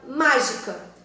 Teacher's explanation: Pensa na palavra, por exemplo, mágica. E esse má é a antepenúltima sílaba, ela é tônica e por isso é proparoxítona